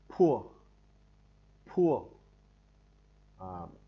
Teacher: Nó bật mạnh hơi ra ngoài, khác ở chỗ là bật mạnh hơi ra ngoài.